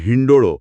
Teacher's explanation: ન નો સ્પષ્ટ થડકો લાગે છે જે તીવ્ર છે એટલે ત્યાં હી હસ્વ બની જાય છે